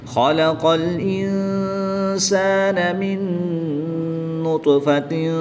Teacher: طا حروف مستعلیہ میں سے ہے تو اس کو پر پڑھیں گے، حروف قلقلہ میں سے ہے اور ساکن ہے